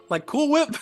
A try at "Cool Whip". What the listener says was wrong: Whip. cool. Whip. Cool whip. You're putting the wrong emphasis on the wrong syllable. sounds like you're hacking up a lung.